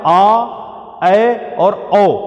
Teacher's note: विवृत में जब हम आ, ए और औ का उच्चारण करेंगे तो मुख की जो ये छिद्र है, ये पूरा का पूरा फैल जाएगा। ये अपने अधिकतम बिंदु तक फैलेगा।